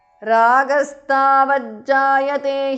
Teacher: Tavat ragastavat because of sandhi. Tavat the th in the end changes to j because of sandhi.